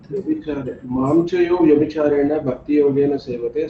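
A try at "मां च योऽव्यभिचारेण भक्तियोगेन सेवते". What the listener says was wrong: Prabhu, please read it as Mamchayaha avyabhicharena. Devotees generally Mamchayo vyabhicharena they read. That is the biggest problem.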